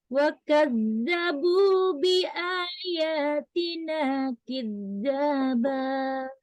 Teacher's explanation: Nada yang tetap dari atas ya, maksudnya tekanan pas di ujung kita naik tadi, nada tetap naik ya, tetap naik. Nada nanti kemudian diseret turun, datarkan ya, diseret turun sedikit kemudian datar. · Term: nada yang kedua datar